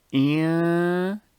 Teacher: That sound, that is called Ekhfaa, because you must hide the Nune phonetically, of course, not in terms of writing.